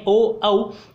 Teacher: ओ और औ का जो उच्चारण है वो कंठ और ओष्ठ दोनों की सहायता से किया जाता है। आप बोल के देंगे ओ औ, तो कंठ और ओष्ठ दोनों की, तो आपके पास ओ और औ का उच्चारण स्थान होगा आपके पास कंठोष्ठ।